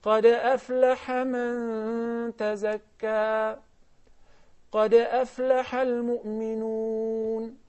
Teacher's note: I just applied the qalqala, the shaking or the vibration, the disturbance, then I move by very fast without stopping.